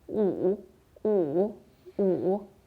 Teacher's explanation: 5, on prononce 5. Il est au troisième ton, comme des montagnes russes. On descend d'abord, ensuite on remonte.